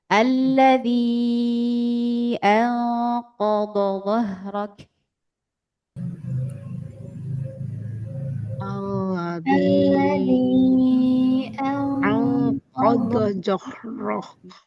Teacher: digigit lidahnya dho, angkat pangkal lidahnya tebal.